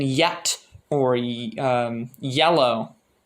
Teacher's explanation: the English Y sound, y, which you could sort of imagine as putting an E just before another vowel